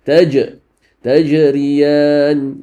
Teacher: تج is القلة. You bounce the letter.